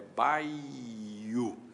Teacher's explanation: a verdadeira emissão é de dois ditongos, portanto, na verdade, não existe hiato aí, e nesse caso, então, não se coloca acento.